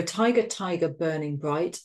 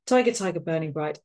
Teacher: the plosive alliteration of the B to really kind of bring that impact and that force to the first line